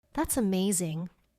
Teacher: Excited tone. Strong rise.